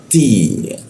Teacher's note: ti ya ada hembusan ti seperti itu. Lalu ri. Ri di bawah hidung.